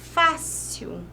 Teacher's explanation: a penúltima sílaba é a sílaba tônica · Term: paroxítona